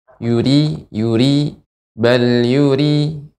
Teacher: ibu Ri dibaca dengan tipis ya dan juga getaran lebih sedikit